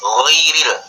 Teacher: Gha itu letaknya tadi di tenggorokan, ujung tenggorokan. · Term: huruf gha